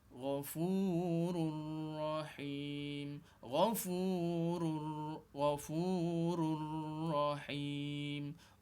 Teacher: Tak perlu dengung. Ra yang bertanwin dengan ra selepasnya tu hendaklah digabungkan kedua-dua huruf tu. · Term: idgham bila gunnah